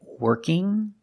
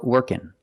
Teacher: We have two pronunciations for ing. I can say working or workin', with just the N sound.